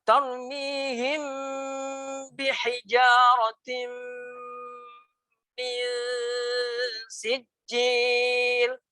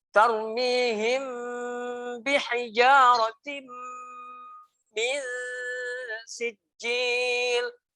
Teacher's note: 2 harokatnya dengung itu lebih lama daripada mad tabi'i · bacaan 6 ini adalah bacaan dengung yang qawiyah yang didengungkan dan ditahan selama 2 harokat.